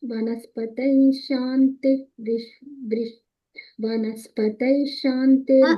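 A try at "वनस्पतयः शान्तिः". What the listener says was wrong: తై కాదు, తై అంటున్నావు, తయ, వనస్పతయ శాంతి అట్లా.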